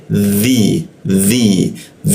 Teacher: huruf dzi, perhatikan ujung lidahnya itu digigit dia. Dzi masuk ke ya di tengah lidah dia.